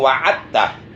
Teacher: Udah aja diidghamkan wa attah langsung. Dalnya jangan dibaca, dalnya dimasukkan ke ta. Itu idgham mutaqaribain sama.